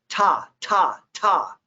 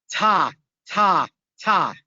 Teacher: it's the T sound, where you slap the tongue against your teeth